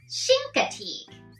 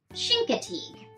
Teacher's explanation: so the ch isn't a cha sound it's a sh sound chincoteague and then we have acidity as a teak that's a